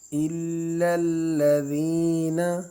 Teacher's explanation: ذال کو ایک الف کی مقدار کھینچ کر پڑھیں گے کیونکہ یہ یا مدہ ہے